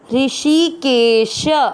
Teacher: शी की मात्रा बड़ी लंबा खींचना है। ऋषिकेश, श में आ मिक्स करेंगे, ऋषिकेश, श में आ की मात्रा तो विसर्ग को पढ़ेंगे ह, ऋषिकेश।